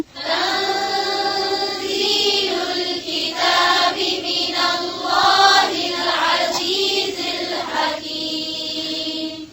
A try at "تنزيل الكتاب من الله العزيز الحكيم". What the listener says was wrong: फिर से पढ़ें, लाम पर झटका नहीं दें.